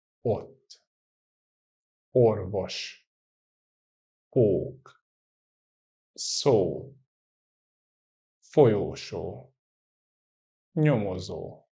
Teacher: the O with no accent and the O with one accent are totally the same sounds. They are just shorter and longer forms of each other